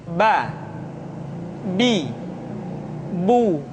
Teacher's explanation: huruf ba dikeluarkan dengan cara merapatkan kedua bibir kita